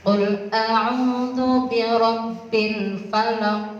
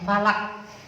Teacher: Falaq qaf juga huruf qalqalah Bapak Ibu. Jadi membacanya juga mantul qafnya.